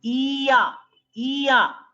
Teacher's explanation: Like you are prolonging E. It's not shortening. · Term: lambi E